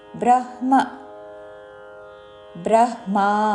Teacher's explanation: ముందు పొల్లు హాతో పలికి తర్వాత పూర్తి మా